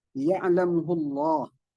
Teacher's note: Apabila ada lafzul jalalah, sebelumnya ada huruf berbaris dhamma, maka dia hukum bacanya tafkhim, yang tebal ya.